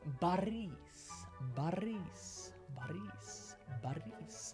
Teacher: Now, it's not going to be Boris, firstly because you know that I is not going to be is, it's going to be is, Boris. But also, the stress is not on the O, it's actually on the second syllable, on the is. And so, the O actually turns into an A when you pronounce it